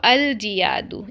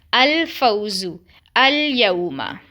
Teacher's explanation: جیسے یہاں پر ابھی یہ ورڈ پڑھیں الجیادو، تو ہم اس کو الجیادو نہیں پڑھتے، ہم لام کو نا مرج نہیں کر رہے ہیں، ہم لام پہ اظہار ہی کر رہے ہیں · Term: اظہار قمری